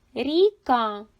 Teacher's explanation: ріка перший звук р м'який приголосний звук другий звук і голосний рік третій звук к приголосний твердий